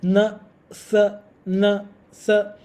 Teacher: sa is a dental sound and na is also dental